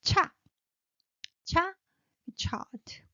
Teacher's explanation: And the cha, burst of air rising.